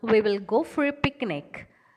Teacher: There is rising tone used in declarative sentences used as questions.